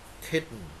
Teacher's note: So T become the glottal stop sound.